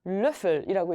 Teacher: 이렇게 해주시면 되고 이것도 입 모양은 오로 말아주시되 소리를 이로 바꿔볼 건데요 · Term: 오의 umlaut